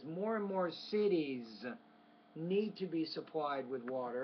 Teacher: you didn't pronounce that final s ending